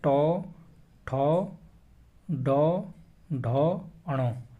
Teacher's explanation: ट वर्ग के जो सभी वर्ण जो हैं वह सभी क्या होते हैं मूर्धन्य व्यंजन होते हैं